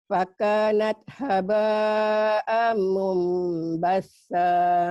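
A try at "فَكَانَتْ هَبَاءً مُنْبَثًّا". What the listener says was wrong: Amnya ditahan sedikit, iklab. Ini idgham bigunah seperti ada gunahnya. Ditahan ya, Makcik. Amnya jangan ragu, bibirnya ditutup. Ini idgham bigunah. Fakanat natnya hamas.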